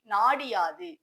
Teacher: நிலைமொழியில் குற்றியல் உகரம் வந்து வருமொழியில் யா என்ற எழுத்து வந்தது அப்படின்னா நிலைமொழியில் உள்ள உகரம் இகரமாக திரியும்